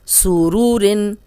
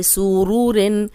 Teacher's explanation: اس میں صرف را کو موٹا رکھیں گے